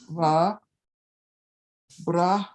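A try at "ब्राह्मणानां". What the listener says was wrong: Manang. No, don't close the M. And don't give me a real hard va. Mix it with a W and you sound like an Indian. Wa. Wa. Not a W, it's not a V.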